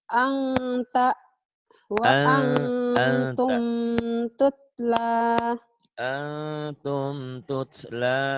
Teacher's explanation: Nun mati atau tanwin bertemu dengan huruf ikhfa jadi samar. Jadi eng.